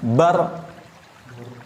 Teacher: Ada getaran sedikit huruf ro.